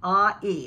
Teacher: jaw smile slightly tensing the back of the tongue upper back the sound begins with ah and moves to e ah e and the tongue actually is going ah e kind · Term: diphthong